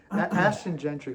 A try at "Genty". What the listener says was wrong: It's Genty. No R.